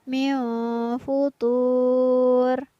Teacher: Pada lafaz min futur kembali berlaku hukum bacaan ikhfa karena ada nun sukun yang bertemu dengan huruf fa, maka nun sukunnya dibaca samar.